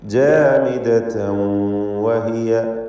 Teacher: ജാമിദതൻ എന്നതിലെ തൻവീനിന് ശേഷം വാവ് വന്നതുകൊണ്ട് ഇദ്ഗാം ബിഗുന്ന നാഖിസ് ചെയ്ത് വാവിലേക്ക് ലയിപ്പിച്ച് മണിച്ചുകൊണ്ട് ഉച്ചരിക്കണം.